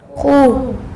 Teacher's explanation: اس کو پر ادا کریں گے، موٹا ادا کریں گے خا کو، یہ خا جو ہے یہ پر حرف ہے۔